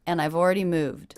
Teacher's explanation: did you notice how i reduced the word and